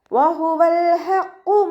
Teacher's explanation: ഹ മഖ്റജ് വരുന്നത് വസത്തുൽ ഹൽക്കാണ്, തൊണ്ടയുടെ മധ്യഭാഗം. സൗണ്ടിനെ വ്യക്തമാക്കി ഉച്ചരിക്കുക കേട്ടോ.